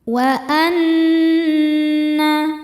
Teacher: Nunnya dihukumi gunnah musyaddadah karena nun bertasydid. Cara membacanya berdengung, tahan dengungannya kurang lebih 2 harokat.